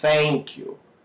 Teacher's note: a pronúncia do th sem que as cordas vocais vibrem